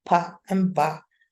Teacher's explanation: So the first relationship here is that these two sounds, pa and ba, are stops and are also bilabial. We close our mouth to make, or we close our lips and then open them again to make them